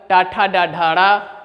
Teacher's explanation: इन वर्णों का उच्चारण स्थान मुर्धा है इसीलिए इन वर्णों को हम मूर्धन्य वर्ण कहते हैं